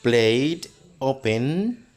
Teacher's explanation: en estos otros tipo de verbos como Play Open y call Ahí vamos a sonar como si fuera una d